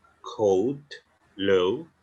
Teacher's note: Cuma untuk Amerika mereka akan baca o dan u